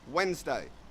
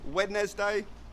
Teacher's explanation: get rid of the D and you'll pronounce this word perfectly